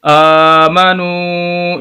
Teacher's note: ایسی واو ساکن جس کے پچھلے لفظ کے اوپر پیش ہو تو وہ مدہ کہلاتی ہے، ایسے لفظ کو لمبا کر کے پڑھتے ہیں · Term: واو مدہ